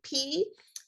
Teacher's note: be visually seen in the front of the mouth so P the lips bottom and top are touching those are what we call bilabial sounds